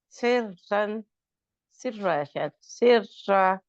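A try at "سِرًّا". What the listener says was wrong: शाबाश, इसमें आपने सिरवन या सिर्रा, इसमें रा को पुर नहीं किया।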